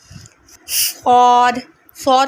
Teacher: सौद को हम दोनों दांतों के दरमियान से ज़बान निकालेंगे और ज़बान ऊपर वाले होंठ से टकराएगी तो नरमी के साथ सौद की आवाज़ निकलेगी